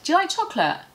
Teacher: I would push it so much together that the beginning of you becomes almost ja. Do you becomes, do you like chocolate?